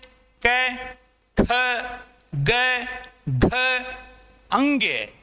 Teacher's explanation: क वर्ग का पूरा जो उच्चारण है वो कंठ से होता है, इसीलिए क वर्ग को कंठ्य वर्ग कहा जाता है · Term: कंठ्य व्यंजन